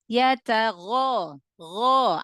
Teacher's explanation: angkat pangkal lidah karena goin adalah huruf tebal